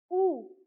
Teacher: This U is like a tight U sound, and your lips will be pushed forward like U. And then finally, nous avons Y, usually like Y.